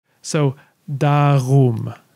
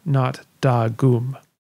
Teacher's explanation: The only other unexpected thing to talk about in jardagum is the pronunciation of that second dotless G. In this context, the letter G is pronounced as what's called a voiced velar fricative. This is the r sound that some people make when they say ugh.